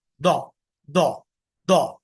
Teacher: जो ज्यादा प्रेफर किया जाता अरब कंट्रीज में वो है दाल वाला साउंड उसको मोटा करना